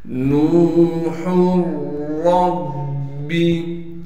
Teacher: نون کو واو مدہ سے ملائیں گے اور نون کو ایک الف کے مقدار کھینچیں گے۔ ہا کو را سے ملا دیں گے۔